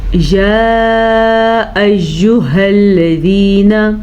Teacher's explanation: مد کی مقدار 2.5 حرکات عربیہ ہے، یعنی 2.5 سیکنڈ تک اس مد کو ہم نے کھینچ کے پڑھنا ہے